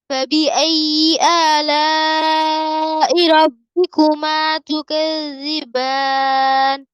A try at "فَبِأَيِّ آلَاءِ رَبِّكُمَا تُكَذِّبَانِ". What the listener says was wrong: জালটাকে আরেকটু ধরতে হবে, হ্যাঁ, যেমন তু ক্যাযিবান, কারণ এটাতে রখাওয়া আছে, মানে আওয়াজ হবে হালকা নরম আওয়াজ, ঠিক আছে, সফট আওয়াজ। তু ক্যাযিবান, ওই যে আপনার সরি জায়ের মতো যেন তু ক্যাযিবান বা হচ্ছে তু ক্যাযিবান এরকম ওই জায়ের আওয়াজ যেন না আসে, আবার যেন একদম আওয়াজ বন্ধ না হয়ে যায়। এখানে রখাওয়ার সিফাত আছে, আওয়াজ চলবে, নরম আওয়াজ।